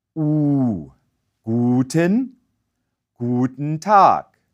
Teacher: The German oo requires your lips to stay rounded while your tongue rises and bunches up against the roof of your mouth towards the back